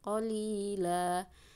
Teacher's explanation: Qalila, jadi di sini jadinya mad iwad kalau diwakafkan ya. Tanwin dibaca panjang 2 harokat karena diwakafkan, mad iwad.